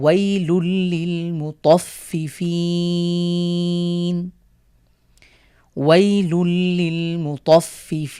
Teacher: নিয়মটা আমরা আগে জেনে এসেছি, নুন সাকিন অথবা তানভিনের পরে র অথবা লামের কোনো একটি হরফ আসলে গুণনা ছাড়া আমরা মিলিয়ে পড়ব। তাহলে এখানে তানভিনের পরে লাম আসার কারণে আমরা মিলিয়ে পড়ব